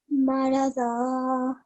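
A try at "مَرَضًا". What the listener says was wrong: Very good, mashallah, you're a fast learner.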